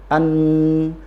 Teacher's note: ujung lidah bertemu dengan gusi atas, disempurnakan suara dari rongga hidung. Itu untuk makhraj yang sempurna pada huruf nun.